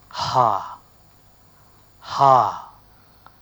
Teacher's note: when you have the air which is coming from Below passes before the vocal folds are starting to vibrate then it results in a breathy attack